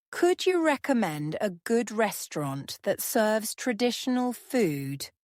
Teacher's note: Notice the rising intonation at the end of the question.